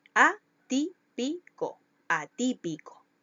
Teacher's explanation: Llevan el acento en la antepenúltima sílaba. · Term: esdrújulas